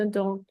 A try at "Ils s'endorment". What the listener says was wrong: Ils s'endorment. So ENT doesn't exist phonetically. Just finish it with an M. Ils s'endorment. ENT is silent. Here, ENT is silent. Quand c'est un verbe. Only if it's a verb, ENT is silent at the end. Ils s'endorment.